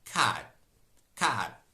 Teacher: t is unreleased whenever it is word final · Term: unreleased t